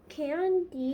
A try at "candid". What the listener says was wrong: Candid. That's not candy. That's candid.